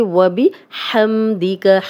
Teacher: واو پہ ہونٹ گول کریں گے